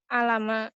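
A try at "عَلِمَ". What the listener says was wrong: Jangan terkecoh sama harokat ain. Jangan liatin harakat patah di ain itu. Tetap aja ikutinnya ke alima ya.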